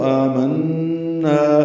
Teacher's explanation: نون مشدد پہ غنہ ہے تو آمنا، نا الف مدہ بھی کھڑی زیر وقف کریں گے